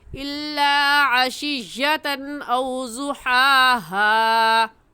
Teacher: यहाँ पर तनवीन के बाद हमज़ा आ गया है, इसलिए गुन्ना नहीं करेंगे